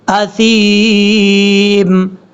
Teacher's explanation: ثا کو آپ نے بغیر سیٹی کے ساتھ پڑھنا ہے، ثا کا مخرج ہے زبان کا سرا اوپر والے جو دو دانت ہیں ان کے اندرونی کنارے سے لگے گا تو ثا پڑھا جائے